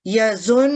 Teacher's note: نون مشدد پر جب غنہ کیا جاتا ہے تو 2 سیکنڈ اس کی آواز کو ہم یظن اس طرح سے ادا کریں گے